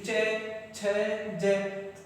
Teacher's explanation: तो चे, देखो जीभ कहाँ पर जाएगी हमारी? तालु पर स्पर्श करेगी, यानी चे, छ, जय, तालु पर जाएगी तो वो तालु कहलाते हैं।